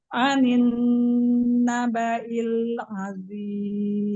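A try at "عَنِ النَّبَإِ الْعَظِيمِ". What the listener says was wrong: Iya, huruf ain ini buka lagi. Buka lagi huruf ain. Ya, rohangnya dibuka. Huruf ain, latihnya, umugiatri, latihnya ucapin huruf H yang kecil yang sama makhraj dengan huruf ain.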